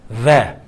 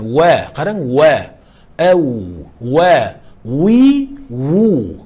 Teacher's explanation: ikki labdan baravariga vovni ishlatsak, inshaalloh bu arabiy vov bo'ladi